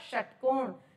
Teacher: श का उच्चारण स्थान निकालने के लिए हमेशा बोलकर देखिएगा षटकोण जब हम बोलते हैं शट तो जीभ एकदम से आगे की तरफ ऊपर टच होती है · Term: मूर्धा